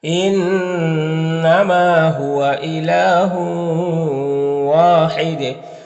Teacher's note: व्लाहहु ला तख इला न इनमा नून मुशद गुना होगा मा में अलि मद्दा है लाम में खड़ा ज़बर है जो अली मदद्दा की तरह होता है यहां पर तनवीन के बाद वाव है हरूफ युबिन में से तो में नास होगा यहां पर अलिफ मदद है यहां पर वफ करेंगे तो ये तनवीन सुकून से बदल जाएगा तो दाल में कलकला भी होगा · इन्नमा नून मुशद्दद गुन्ना होगा, मा में अलिफ मद्दा है, लाम में खड़ा ज़बर है जो अलिफ मद्दा की तरह होता है।